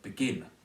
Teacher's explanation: The word begin is stressed on the second syllable.